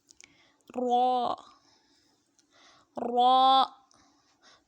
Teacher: زبان کی کروٹ کے آخر سے زبان کی نوک تک کے حصے سے جب وہ اوپر کے اگلے دانتوں کے مسوڑوں سے لگے تو پھر را ادا ہوگا. را کو بھی ایک الف کی مقدار تک لمبا کر کے پڑھیں گے.